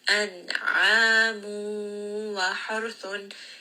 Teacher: Here we have a tanween followed by the letter waw. So this is another case of idgham with ghunna. · So we are going to merge this nun sakin within the letter waw.